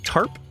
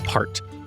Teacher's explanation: the word tarp and the T sound in the word heart if you put your hand in front of your mouth you will feel a puff of air for the first one that is aspiration in English initial stop consonants are always aspirated so if you